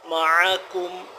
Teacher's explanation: مع عین حلق کے اوپر والے حصے سے نکالیں گے تھوڑا سختی سے